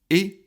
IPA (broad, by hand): ɪ